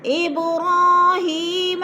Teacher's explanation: ابراہیم، اب پہ قلقلہ ہے، با ساکن ہے اور حروف قلقلہ میں سے ہے تو با کو ہلا کر پڑھنا ہے